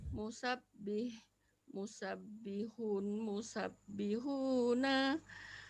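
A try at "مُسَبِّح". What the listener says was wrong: Hurufnya dibaca mati Bu, bagian belakang. Musabbihun, musabbihin. Untuk latihan kita baca mati aja.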